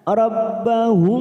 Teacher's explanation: Yad'una, karena kita tadi wakaf di sini, sekarang kita wasol atau terus, maka cara membacanya rabbahum, mim sukun bertemu ba. Biasanya mim sukun kita baca jelas, sekarang kita dengungkan selama 3 ketuk. Namanya bacaan ikhfa safawi, ya, dengan sedikit menempelkan kedua bibir dan didengungkan selama 3 harokat atau 3 ketuk.